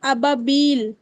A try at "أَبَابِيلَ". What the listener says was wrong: اچھا آپ دیکھیں با کے اوپر فتحہ بھی ہے اور الف بھی ہے، ٹھیک ہے. تو اس کو ہم کتنے حرکت تک کھینچیں گے؟ ہاں تو یہ ابابیل ہو جائے گا، ٹھیک ہے، ابابیل نہیں.